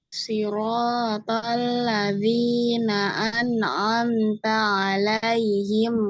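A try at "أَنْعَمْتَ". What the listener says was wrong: Hati-hati di nun, nun dan mim ini dialirkan ya. An'amta, an'amta, eh dialirkan. Nun dan mimnya ini dialirkan. Jangan ada tawalut ya. An'amta, jangan seperti itu ya. Tapi an'amta.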